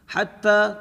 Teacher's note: پر نون مشدد ہے، نون مشدد کے اوپر غنہ ہوگا، حتی تا کو سختی کے ساتھ تھوڑا سا کھینچ کے پڑھیں گے کیونکہ کھڑا زبر ہے